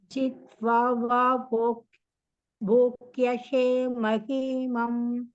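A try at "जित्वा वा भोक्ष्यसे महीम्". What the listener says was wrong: போக்ஷ்யசே மஹீமம் இல்ல மஹீம்.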